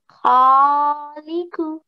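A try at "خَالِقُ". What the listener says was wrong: Now kha, make it a bit round.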